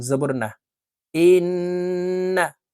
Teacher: নুনের উপরে তাসদি আছে তাই এই হামজা নুনের সাথে গুন্নার সহিত পড়বো